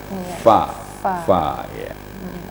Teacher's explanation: Ringan sekali mungkin tadi Ustaz. Harus dihembuskan angin dulu, nafas dulu baru diiringi dengan suara. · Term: hamasnya